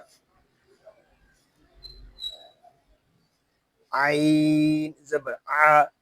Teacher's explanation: عین حلق کے درمیان والے حصے سے ادا ہوگا